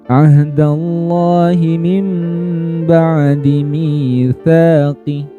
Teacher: dengung bunyinya dan dengungnya ditahan teman-teman ya. Jangan buru-buru. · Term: iqlab